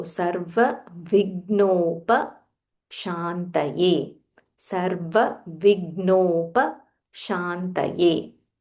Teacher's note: Gha Mahaprana but half Gha only